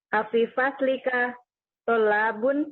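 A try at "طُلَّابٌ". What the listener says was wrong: Enggak ada tolabun. Iya, tulabun Ibu.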